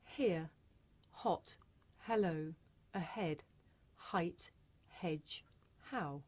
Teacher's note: this is a voiceless consonant it makes very little sound because it's really just your breath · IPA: /h/